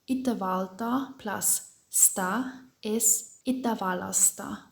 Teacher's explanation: So here we see the LT changes to a double L